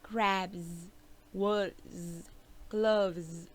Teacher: it is pronounced Z after a voiced sound